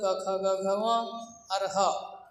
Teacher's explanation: हरिन पदे कः वर्णः कंठ वर्तते, ह अकुह विसर्जनीयानां कंठः, अ कु मतलब क ख ग घ ङ और ह, इनका उच्चारण स्थान कंठ होता है